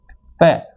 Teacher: प उपपदमानिया नाम ओष्ठोच्चय, तो प वर्ग जो पूरा होता है उसका उच्चारण स्थान होता है होठों का, और होठों का उच्चारण स्थान होने की वजह से इसमें दोनों होठ हैं वो आपस में टकराते हैं, दोनों होठों का आपस में स्पर्श होता है